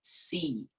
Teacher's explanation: Nah, intinya adalah lidah kita diangkat. Ketika kita ucapkan si, lidah kita rata dari depan sampai belakang.